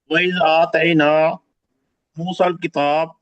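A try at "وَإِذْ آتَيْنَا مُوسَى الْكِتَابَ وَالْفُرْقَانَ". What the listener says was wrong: کتابہ، کتاب وقف نہ کریں آپ سب، وہ کتابہ والفرقان ایسے ہی پڑھیں.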